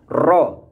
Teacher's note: Adapun yang dimaksud sifat ini adalah jika mengucapkan ro supaya ujung lidahnya tidak terlalu banyak bergetar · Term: takrir